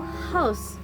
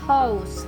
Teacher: Fricative voicing change in the voicing of the final consonant.